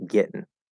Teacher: i am hearing a very very very clear second vowel e